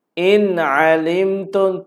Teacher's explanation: Nun mati bertemu dengan ain. In alimtum, tiada dengun cuma kita jelaskan bunyi in. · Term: izhar